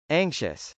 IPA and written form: ˈæŋkʃəs (anxious)